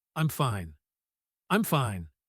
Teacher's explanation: It is usually said quickly, with a sharp cutoff at the end. Fine, like a door slamming shut.